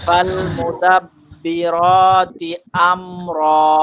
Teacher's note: কেমন হবে তাহলে উচ্চারণ? আমর র একদম মুখ ভরে যাবে আওয়াজে, মুখটা সম্পূর্ণ আওয়াজ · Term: মোটা